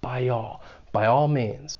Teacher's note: they may use intrusion to link the two vowel sounds in the words by and all · we're going to use a slight Y sound which comes after front vowel sounds like I so by all means and you hear that slight y Sound